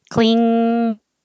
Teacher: of my tongue is making the k ko ko and then the back of the tongue goes very high and blocks off all the air flow through the mouth